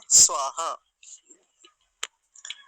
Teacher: स्वर काह यानी विसर्ग जो है उसका उच्चारण करना है छोड़ना नहीं है